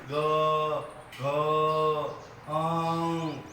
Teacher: જ્યારે ક ખ એમાં કંપારો આવતો નથી. તમે ગ ઘ આમાં બધામાં નાદ તંત્રીને કંપારો આવે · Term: ઘોષ